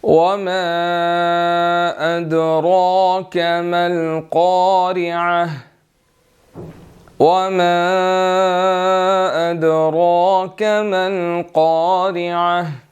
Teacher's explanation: تو یہاں پر وما جو ہے ماں کے اوپر چھوٹی مد ہے، جس کو ہم نے 2 to 3 سیکنڈز جو ہے وہ لمبا کرنا ہے۔ وما ادراک، را موٹا ہے، ما القاریعہ، قا کو بھی ہم موٹا پڑھیں گے، را کو باریک پڑھیں گے کیونکہ اس کے نیچے زیر ہے، اور قاریعہ تو عین کو آپ نے سیپریٹلی ادا کرنا ہے اور ہا کو ہم نے سیپریٹلی ادا کرنا ہے۔